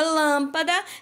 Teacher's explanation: temos por exemplo lâmpada então quando eu falo a palavra lâmpada eu pronuncio a sílaba Lan com mais tonicidade com mais força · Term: proparoxítona